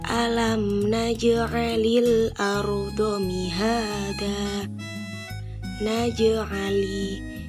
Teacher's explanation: Jadi, bacaan qalqalah sughra adalah apabila ada salah satu huruf qalqalah yang mati atau sukun asli. Cara membacanya adalah dengan memantulkan huruf qalqalah yang sedikit atau ringan.